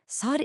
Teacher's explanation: sod is a deep, heavy s that comes from farther back in your throat.